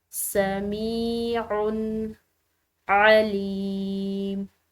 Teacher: میم کے بعد یا ساکن آ رہا ہے تو اس کو ایک الف کی مقدار کھینچ کر ادا کریں گے